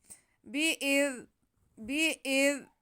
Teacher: حمزہ کا زیر ہم زال سے ملا لیں گے اور زال کو بہت نرمی سے بہت آرام سے پڑھیں گے، بالکل سیٹی کی آواز نہیں آنے دیں گے